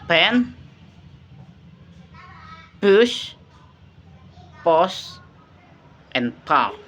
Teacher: the P sound is a voiceless, bilabial, and plosive, produced by clashing both lips uh, to stop the airflow and then releasing it without vocal cord vibration.